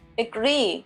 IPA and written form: əˈɡriː (agree)